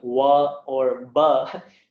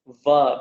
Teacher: it requires both the danta, that's your teeth, and oshtham, that is your lips. So when your bottom lip touches your top teeth, that is called dantoshtham, va, and you get this pronunciation va.